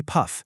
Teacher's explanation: So when you actually say puff, you don't just say a sterile, clean puff. You actually release this tiny puff of air. In linguistics, that's called aspiration, and it's represented by that little superscript H you see there.